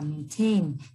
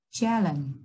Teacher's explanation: cho âm rơi vào âm tiết thứ hai